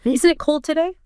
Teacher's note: even though it's grammatically a question, you can use a falling intonation.